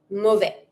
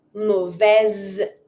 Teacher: But because I'm going to pronounce it, the S is between two vowels. It's between the I and the E. So I'm going to say mauvaise with the Z sound.